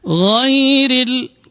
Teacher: huruf ra-nya dibaca tarqiq, dibaca tipis karena berbaris kasrah